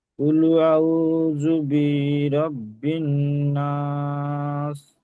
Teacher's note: ওয়াও সাকিনের আগে ডান দিকে পেশ এসছে, এটাকে অমাদ্দা, তাই কুল আউ একালি পরিমাণ আমরা টান দিয়ে পড়বো।